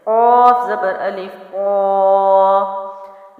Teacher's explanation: اور ہم نے ایک اور پوائنٹ پڑھا تھا کہ موٹے حروف کے ساتھ جو مد ہوتی ہے وہ بھی موٹی پڑھی جاتی ہے